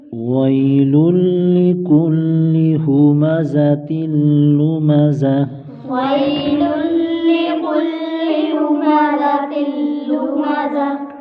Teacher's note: للی پر ادغام یرملون بلا غنہ، یعنی غنہ نہیں کریں گے کیونکہ تنوین کے بعد حروف یرملون سے لام ہے۔